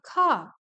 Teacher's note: In some British dialects, the r at the end of the words, like car, is often not pronounced, resulting in car.